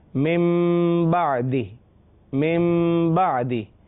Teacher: یہاں نون کو میم سے بدل رہے ہیں اور لکھنے میں نون ہے لیکن آواز جو ہے وہ میم کی نکلے گی اگلے با کی وجہ سے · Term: اقلاب